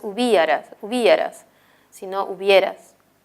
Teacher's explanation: en hubieras, si aparece la cerrada y la abierta, la I y la E, pero la I no suena más. No es hubieras, sino hubieras.